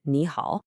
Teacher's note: When you have 2 of those low, zombie third tones in a row, like in ni hao, the first one actually changes into a rising second tone.